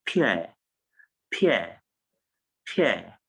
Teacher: Because when you transcribe it, it's an U and schwa sound